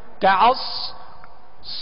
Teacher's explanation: صاد کو پر اور سیٹی کی آواز میں پڑھیں گے